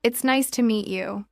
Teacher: Notice the rise and fall of the tone. The voice goes up slightly at nice and falls gently at you.